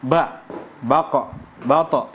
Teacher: kalau langsung berhenti namanya adalah syiddah